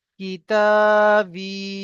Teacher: বা ইয়াজের বি, ইয়া সাকিনের ডান দিকে জের এসছে, তাকে ইয়া মাদ্দা বলা হয়, ইয়া মাদ্দাকে এক আলিফ পরিমাণ টান দিয়ে পড়তে হয়